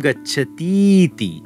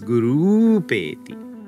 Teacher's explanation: The two vowels are going to fuse together and turn into the long version of the vowel.